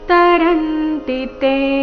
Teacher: ಪ್ರಪದ್ಯಂತೆ ಈ ಶಬ್ದದಲ್ಲಿ ಆಘಾತಗಳ ಮೇಲೆ ಗಮನ ಕೊಡಬೇಕು ಮಾಮೇವಯೇ ಪ್ರಪದ್ಯಂತೆ [ಸಂಗೀತ] ಮಾಯಾಮೇತಾಂತರಂತಿತೆ ತರಂತೆ ರ ಮೇಲೆ ಆಘಾತ